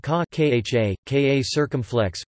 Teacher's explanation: ค่ะ (kha, [kʰâ], with a falling tone) when the speaker is female